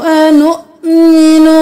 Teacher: واو نہیں پڑھنا، حمزہ کو جھٹکا دینا ہے